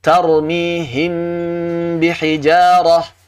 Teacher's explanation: Karena memang cara mengucapkan yang dikenal oleh para ulama terdahulu itu ternyata dengan merapatkan kedua bibirnya. Baik ba bertemu mim ataupun mim bertemu dengan ba.